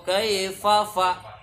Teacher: huruf fa ini adalah huruf yang hamas, huruf yang ketika mengucapkan huruf itu keluar sedikit udara